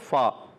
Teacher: پہلا حرف ہے فا۔ فا ادا ہوتا ہے اوپر والے دانتوں کے کنارے، جب نچلے ہونٹ کے تر حصے سے لگتے ہیں تو ادا ہوتا ہے فا، یاد رکھنا ہے۔